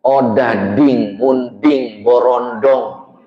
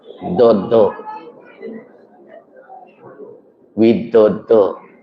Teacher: Orang Sunda ujung lidah ke tengah langit-langit. Odading dodo itu ke tengah langit-langit. Yang benar adalah ujung lidah ke gusi atas. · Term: dalnya